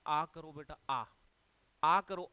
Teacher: आ जो है वो विवृत स्वर है, इसमें मुख सबसे ज्यादा खुलता है